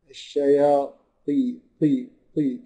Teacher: كانها رايحه للتاء شويه بس ما تبقاش تاء ابدا لازم تبقى طاء زي ما هي بس ايه الاستعلاء بتاعها او التبخين بتاعها اقل · الطاء في كلمه الشياطين اقل او اقل مراتب الايه التفخيم